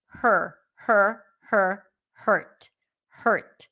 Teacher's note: the word hurt is a stir sound. So there is no vowel there really. We do pronounce the H.